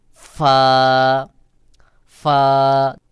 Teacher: নিচের ঠোঁটের পেট সামনের উপরের দুই দাঁতের আগার সঙ্গে লাগাইয়া বাহিরের দিকে বাতাস বের হবে যেমন ফা ফা সামনের উপরের দুই দাঁতের আগা এবং নিচের ঠোঁটের